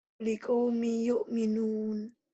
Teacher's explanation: Liqaumin jadi n-nya hilang tuh, n-nya hilang.